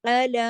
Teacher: علی دو حرکات کھینچا جائے گا، الف کے برابر پڑھا جائے گا کیونکہ اس پر کھڑی زبر ہے